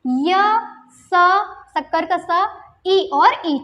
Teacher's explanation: कंठ से थोड़ा सा आगे तालव्य, ये उसको तालु भी कहा जाता है। तो तालु से उच्चारण होता है च वर्ग का, और च वर्ग के अलावा य स और ई का, इन चारों का भी उच्चारण तालव्य से होता है।